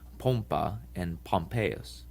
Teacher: The length of the O is the difference between the words pompa and Pompeius.